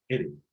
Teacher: la R hace una especie de como aleteo, ¿no? R, porque la lengua se fa, así, rápido.